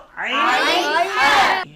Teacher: কণ্ঠনালীর মধ্যখান থেকে হলকের মধ্যখান থেকে দুটি হরফ উচ্চারিত হয়